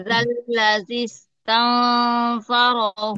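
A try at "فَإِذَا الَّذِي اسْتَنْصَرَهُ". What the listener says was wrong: Nah, belum ya. Itu belum tebal. Faizal ladzi istansarahu. Nah, itu harus tebal ya. Jadi kuncinya di huruf sodnya juga harus tebal ya Bu ya.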